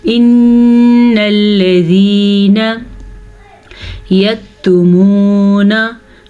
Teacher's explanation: जाल को नरमी से पढ़ेंगे और ये है या मद्दा, इसे हम खींच के पढ़ेंगे · इन्नल्लज़ीना यक्तुमूना, वाव साकिन से पीछे हर्फ पे पेश है तो ये वाव मद्दा है, इसे भी हम खींच के पढ़ेंगे। काफ को नरमी और बारीकी के साथ पढ़ेंगे। नून के ऊपर ज़बर है तो इसे हम खींच के नहीं पढ़ेंगे।